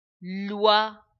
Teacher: The sound of oi is wa